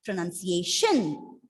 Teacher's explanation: The stress is on the fourth syllable.